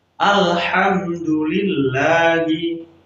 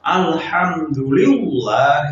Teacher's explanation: Jadi sebelum huruf Allah tersebut ada huruf yang berharokat kasroh, ya, maka dibaca tipis. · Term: tarkik